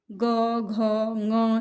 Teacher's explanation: इसको बोलते हैं तो स्वर तंत्रियाँ जो हैं वो अधिक झंकृत होती हैं, इसलिए सघोष वर्ण हैं।